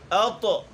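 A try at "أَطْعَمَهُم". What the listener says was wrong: नाक में नहीं पढ़ना। अतो अतो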